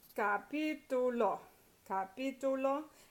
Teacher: So it's capítulo, capítulo, and you've got ítulo. The last 3 syllables, the third to the last is stressed